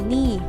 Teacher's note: When you are reading out each digit separately, as when you give your phone number, it may be pronounced with the long vowel as ni.